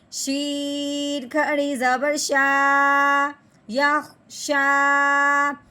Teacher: شین کے اوپر کھڑی زبر آنے کی وجہ سے اس کو ایک الف کے برابر لمبا کریں گے